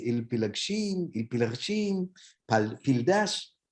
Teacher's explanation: We suddenly have the existence of the voiceless bilabial stop, the p, which we don't have in standard Arabic, right? So we say il pilagshim, pildash, we have p.